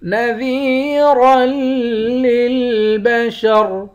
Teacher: نذیرا للبشر، ذال کو یا کے ساتھ ملا کر یا کو ایک الف کے مقدار کھینچ کر پڑھیں گے، یا حروف مدہ ہے، را کو موٹا پڑھیں گے، آخر میں را ساکن ہے۔